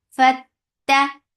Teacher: Ta will get sifa of shidda. There is no flow of sound.